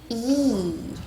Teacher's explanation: 장모음 이의 소리는 혓바닥이 이렇게 솟구쳐서 입천장에 다을락말락 하면서 이 하고 소리가 납니다.